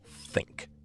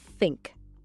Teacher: The th sound doesn't exist in a lot of languages and it requires something kind of unusual. You actually put your tongue between your teeth.